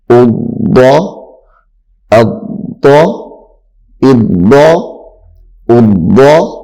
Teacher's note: اس کو بھی موٹا کر کے پڑھنا ہے، یہ چونکہ موٹے روپ میں سے ہے، حروف مستعلیہ میں سے